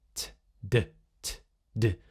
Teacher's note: So the voiced version of t is d